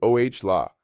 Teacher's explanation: Notice how the h is completely silent in Spanish and the stress falls on the first syllable.